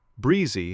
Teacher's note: Breezy has a long e, so your mouth widens a little.